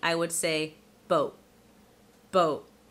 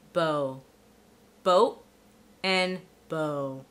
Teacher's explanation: with a glottal stop instead of the true T